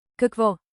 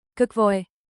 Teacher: Kahk vo, rising, then Е. a short fall.